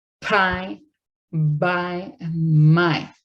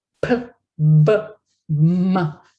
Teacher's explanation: So bilabial sounds are those that are characterized by the coming together of both of my lips and then coming apart and releasing the air. So the lips come together for the first sound in these words · p, b, and m, these consonants are called bilabial consonants because they're all characterized by the coming together of my lips and coming apart. P, b, m. And they both involve both of my lips.